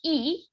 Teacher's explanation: the bulk of the tongue is very far forward and up